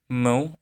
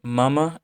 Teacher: It's a consonant that involves flowing air through your nasal cavity, aka your nose. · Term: nasal consonant